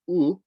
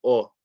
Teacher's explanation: And with regards to the dhamma, instead of saying u, you'll have people saying o.